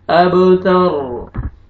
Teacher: वक्त की सूरत में रॉ से पहले फतह है तो रॉ को पुर करेंगे